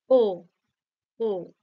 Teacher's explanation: জীবটা হালকা উপরের দিকে উঠে থাকছে সেজন্যই এটাকেও উচ্চমধ্য স্বরধ্বনি বলা হয়